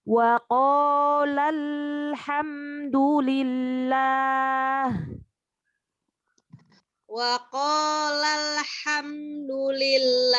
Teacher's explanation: Gimana supaya tidak memantul huruf lam bersukunnya? Maka kita alirkan.